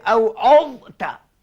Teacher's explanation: Satu lagi kalau kita jumpa huruf za ni mati anak-anak jumpa dengan huruf ta jaga jangan di hakan dia seperti apa pada misal apa jangan diidghamkan masuk dalam ta